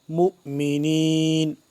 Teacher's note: واؤ کو نہیں پڑھیں گے، حمزہ کو پڑھیں گے